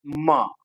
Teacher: It is a voice sound. And what is the place of articulation? The place of articulation is bilabial. Voiced bilabial, manner enti nozzle.